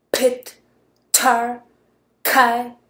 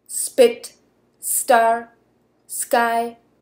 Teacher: But if P, T, and K is preceded by S, as in spit, star, sky, then there is hardly any air coming out of your mouth, as you can see with your little experiment.